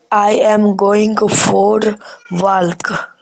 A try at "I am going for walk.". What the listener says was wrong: पहला चीज इसमें WALK, एल साइलेंट है, वो हमेशा होता है वॉक। I am going for walk. वॉक जैसे बत्तख का सुने वैक वैक, वैसे ही है। वह कागज का नहीं होता है, वैक होता है, वैक होता है, वैसे ही वॉक। WLK वॉक, वॉक।